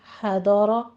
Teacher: حضر، ہا وسط حلق سے ادا کریں گے، ضاد کو ہم حافت اللسان سے ادا کریں گے، زبان کی کروٹ اوپر لگائیے اور سختی سے پڑھیں گے، اس کو پر پڑھنا ہے، حروف مستعلیہ میں سے ہے، رو بھی مفخم پڑھی جائے گی۔